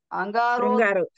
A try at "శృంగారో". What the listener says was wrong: శృంగారో శ్రు అక్కడ ఉంది పైన.